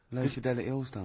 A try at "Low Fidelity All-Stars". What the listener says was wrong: Yeah, Low Fidelity, because you went Low Fidelity, wasn't it? No, it's just you didn't open your mouth wide enough.